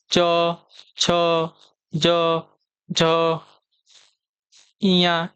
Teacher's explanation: वह वर्ण जिसका उच्चारण तालु से होता है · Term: तालव्य वर्ग